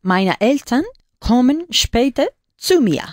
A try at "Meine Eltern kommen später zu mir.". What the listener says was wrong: Muy bien.